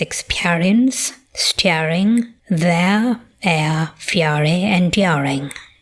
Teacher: We have a separate centering diphthong phoneme in the lexical sets near, square, and pure.